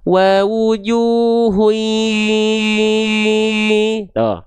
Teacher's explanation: Karena dia masuk hidung, sengau suaranya dengung dia tahan dua harakat lebur.